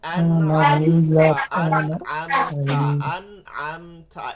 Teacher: একটু থায়ের মতন শব্দ শোনা যায়, থা বলে না, তা এবং কাফের মধ্যে হামসটা বের করে, ঠিক আছে? হামসটা বের করতেছে।